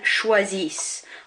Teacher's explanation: I'm not pronouncing that ENT. It has to be there, but I'm not pronouncing it. So choisissent, CHOIS, that's our main bit, and the bit in blue is ISSENT.